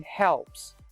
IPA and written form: helps (helps)